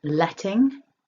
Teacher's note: with letting stress the first syllable and you want that nice ting up in the nose